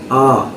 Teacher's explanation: آ یہ کھڑا زبر ہے، کھڑا زبر برابر ہوتا ہے مدہ کے، اور مدہ کی مقدار ایک الف ہے